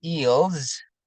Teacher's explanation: The dark le is also found when it precedes a consonant, as in eels, ya. Nah, dark le juga bisa terjadi kalau dia disatukan dengan konsonan yang lainnya atau disebut sebagai konsonan cluster ya.